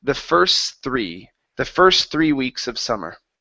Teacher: you do not have to pronounce the T because the t is trapped between two consonants